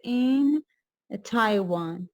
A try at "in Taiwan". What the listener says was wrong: don't read it like that it's not the end of the sentence